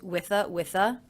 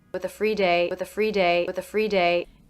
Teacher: I pronounced the ending th unvoiced, with a. Sometimes when people link the ending th that is unvoiced into a voiced sound, like the vowel schwa, they will voice it and say with a.